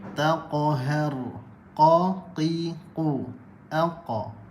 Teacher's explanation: pangkal lidah bertemu anak tekak huruf qaf